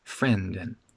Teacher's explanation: the D in friend doesn't disappear. It's not a glottal stop, but it's spoken really lightly.